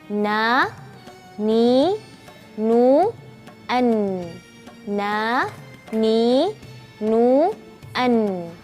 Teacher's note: Huruf nun itu adalah dari ujung lidah bertemu bawah sedikit dari makhraj lam.